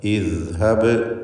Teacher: ഇദ്ഹബ് ദാലിൻ്റെ ഉച്ചാരണം ശ്രദ്ധിക്കുക. നാവിൻ്റെ അറ്റത്തിൻ്റെ മുകൾ ഭാഗവും മേലെ മുൻപല്ലിൻ്റെ അറ്റവുമാണ് മഖ്റജ്. അയവോടുകൂടി റഹാവത്തോടുകൂടി ഉച്ചരിക്കേണ്ട അക്ഷരം ഇദ്ഹബ്.